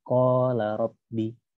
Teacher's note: Jadi tidak dibaca fathah harokat fathah biasa, tapi dibaca panjang dua harokat.